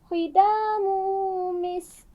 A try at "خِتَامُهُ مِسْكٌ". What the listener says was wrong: واضح کیجیے ہاں کو. ختامہ مسک.